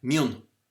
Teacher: the I before nasal consonants again becomes a back vowel, O, but there are some dialects, especially in Ulster, that maintain the I and say mhuineann.